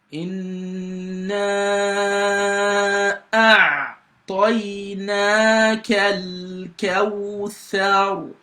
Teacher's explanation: So the ayn is a letter of the throat. It comes from the mid of the throat, and so before you can pronounce an ayn perfectly, you've got to block the passage of the air from your throat.